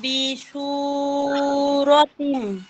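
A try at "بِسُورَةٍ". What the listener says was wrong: না আপু, বিসু, সু সু সু, বিসু। হ্যাঁ, শিন হচ্ছে শিন, আর এটা হচ্ছে সিন, বিসু।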